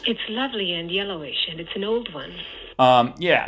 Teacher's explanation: old one yeah so the H star here is relatively high then we get a down step H star on yellowish and then it bounces back up again not quite as high as the initial one